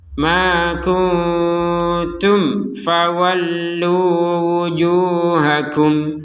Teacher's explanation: Kemudian ada mim sukun bertemu fa, bacanya dengan jelas.